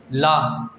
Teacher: पार्श्विक यानी जीभ के मुख से दोनों तरफ से वायु निकलती है, इसलिए इसे पार्श्विक व्यंजन कहते हैं।